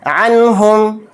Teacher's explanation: حلقی کے حروف میں سے ایک حرف ہے، تو اس لیے نون کی آواز کو ظاہر کر کے بلا غنہ کے جلد پڑھیں گے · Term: اظہار